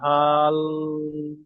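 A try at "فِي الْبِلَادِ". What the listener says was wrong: ফি হা টান হয়ে যাচ্ছে, হা টান হবে না। ফি হাল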